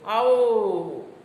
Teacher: તો તમે વ પર જે સ્ટ્રેસ આપ્યો એને એક અર્થ છે. આ બલાઘાતથી તમે અર્થ પેદા કરો છો.